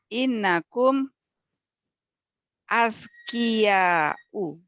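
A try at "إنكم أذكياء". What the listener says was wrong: Aywa, ahsanti. Innakum azkiya'u.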